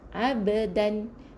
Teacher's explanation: di tengah-tengah bacaan kita menggunakan qalqalah yang kecil saja, ringan saja bunyinya, lantunan dia sekecil saja.